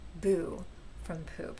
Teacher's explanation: pa to ba with pa picking up the plus voice from that vowel to become ba. So that's how you get boo from poop.